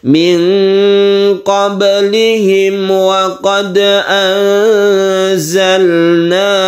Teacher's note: Jangan lupa di sini ada ba yang kita qalqalahkan atau kita pantulkan.